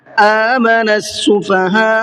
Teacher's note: آمن السفہاء، یہاں لاسٹ میں یہ بڑا مد ہے، بڑا مد ہونے کی وجہ سے اس کو اور زیادہ کھینچنا ہے، چھوٹے مد سے بھی زیادہ کھینچنا ہے، 4 سے 5 الف کے برابر اس کو کھینچنا ہوتا ہے